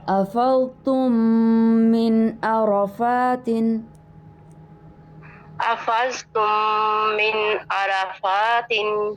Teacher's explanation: پہلے میم کو ہم دوسرے میم میں اس کو مرج کر کے اس کا ادغام کر کے ہم غنہ کر کے یہاں پڑھ رہے ہیں